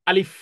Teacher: মুখের ভিতরের খালি জায়গা থেকে আলিফটি উচ্চারণ হবে হরকত বিহীন। কোনো হরকত নেই, জবর জের পেশ কিছুই নেই।